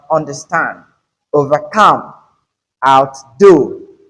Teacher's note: when it comes to compound verbs, you stress the second word · you don't stress under, rather on. The stress is on stand. You have understand.